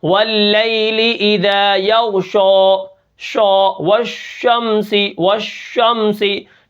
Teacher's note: شین کو ہم نے موٹا نہیں پڑھنا